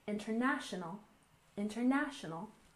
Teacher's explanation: We stress the third syllable, international, international.